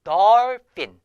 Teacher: 오와 어의 중간 발음 정도 됩니다